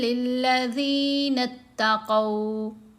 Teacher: میں چھپا لیا، من قبلہم، وَلَدَارُ الْآخِرَةِ خَيْرٌ لِلَّذِينَ اتَّقَوْا، یہاں قاف کے اوپر زبر، ساتھ واو ساکن، لین حرف ہے